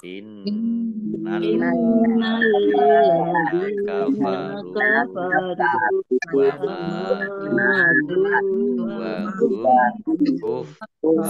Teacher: nunnya dibaca gunnah, mendengung, ya ditahan 2 harokat